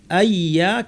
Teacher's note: আইয়া যুক্ত করে পড়ব আইয়া কিন্তু এর প্রথম অংশে গুন্না করব আই নাক থেকে গুন্না করে ইয়া বলার সময় গুন্না শেষ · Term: গুন্না সহ ইদগাম